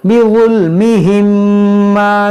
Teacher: यहाँ पर देखें पहले आप समझें कि मीम साकिन के बाद दूसरी मीम यहाँ पर इदगाम होगा